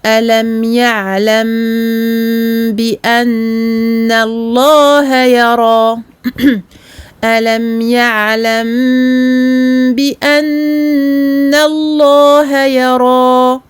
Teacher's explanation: Donc quand on se retrouve avec un mime sakin suivi d'un ba, on va donc prononcer le mime, ne pas faire de pression du tout sur les lèvres, prolonger la rouna de façon longue et ensuite prononcer le ba. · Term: la dissimulation du mime